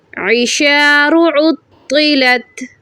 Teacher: وَإِذَا الْعِشَارُ عُطِّلَتْ. طا مشدد اینڈ موٹا حروف ہے، موٹا کریں، دباؤ ڈالیں.